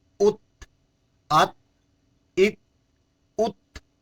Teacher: یاد رکھ لیں یہاں ات، ات، ات نہیں پڑھیں گے کیونکہ تا میں قلقلہ نہیں ہے، اس کی آواز دوبارہ لوٹ کر نہیں آئے گی۔ ات، ات، ات، آواز کو وہاں ہی بالکل پست کرنا ہے، ختم کرنا ہے۔